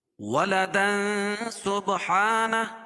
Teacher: اخفا حقیقی کیونکہ تنوین کے بعد حروف اخفا کے 15 حرفوں میں سے سین ہے